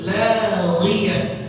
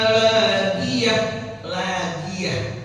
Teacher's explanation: Terus laghiyah, ghainnya jangan diubah menjadi g.